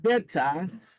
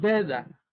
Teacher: The sound of T in better is pronounced D or something like that in American English